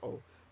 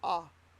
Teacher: In Ashkenazi Hebrew, when we read a comets, it's always o, but which is different than patach, ah.